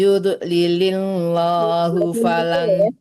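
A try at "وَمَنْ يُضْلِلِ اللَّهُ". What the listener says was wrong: Jangan yud lilil, nggak boleh mantul ya, jangan dilepas ya. lam Allahnya tipis karena sebelum lam Allah harakatnya harakat kasrah ya. Yudlilillah tipis kan lam Allah. bukan nggak boleh mantul karena dot itu bukan huruf qalqalah. Yang mantul itu huruf qalqalah doang.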